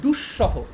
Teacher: দুঃসহ, দেখো এখানে একটা ইন্টারেস্টিং ব্যাপার, এখানে যে দুঃসহটা আছে এটা বানানটা দন্তস্ব দিয়ে কিন্তু উচ্চারণটা তালব্যস্ব দিয়ে, দুঃসহ, এটা কিন্তু দুঃসহ না, বুঝছো?